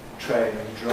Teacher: The /tr/ /dr/ ones make a special kind of affricate in English